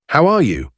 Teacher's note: you might hear it pronounced like how are you with a very soft and almost dropped R